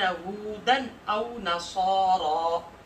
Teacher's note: ہودن پر آگے حمزہ ہے اظہار کر رہے ہیں